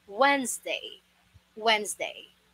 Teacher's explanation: you don't pronounce the sound of S here as S. You should create a Z sound.